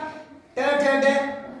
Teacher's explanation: ट जीभ पलट कर आते मुड़ कर